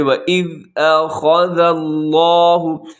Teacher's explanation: حمزہ تو باریک ہے، خا موٹا ہے، ذال باریک ہے، لفظ اللہ وہ پر پڑھا جائے گا۔